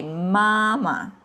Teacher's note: usually the second Hanzi it comes with the neutral tone, which has no tone marks on the top.